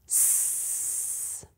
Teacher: It should sound like s. Notice how the airflow is smooth. There's no slushiness or disruption to that airflow. That smoothness is one way to know that the S is sounding perfect.